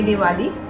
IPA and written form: dɪˈwɑːliː (Diwali)